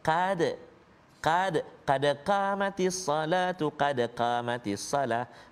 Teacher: Qad tebal, qaf qa, pangkal lidah dia duduk belakang. Belakang pangkal lidah tu dekat dengan anak tekak